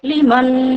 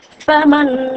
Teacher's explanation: নুন সাকিনের পরে ঈদগামের বা গুন্নার অক্ষর নুন এসেছে তাই এখানে এক আলিফ পরিমাণ গুন্নাহ সহকারে পড়তে হবে